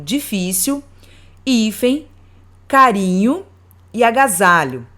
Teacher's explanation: podemos perceber que a sílaba tônica é a penúltima.